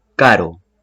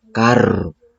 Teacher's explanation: la r tiene un sonido simple y suave